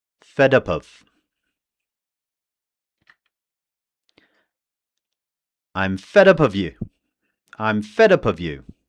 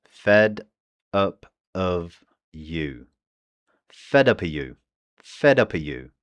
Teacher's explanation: the V in of becomes very weak or it just disappears all together.